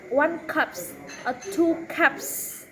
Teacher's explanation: there's no voicing at the end